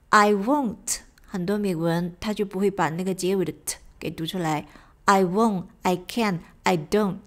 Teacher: I won't， I can't， I don't 都是属于这种 stop t 的处理